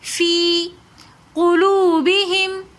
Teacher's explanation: قاف موٹے حروفوں میں سے ہے تو اس لیے قاف کو ہم موٹا پڑھیں گے